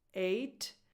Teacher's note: No H sound, because a lot of people place an H sound at the beginning of this number, and that would sound like hate, which is a completely different word.